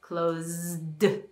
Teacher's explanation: close actually is a z sound so in this case this is voiced so we need the d